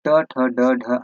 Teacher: ट ठ ड ढ आपके क्या है मूर्धन्य ध्वनियां है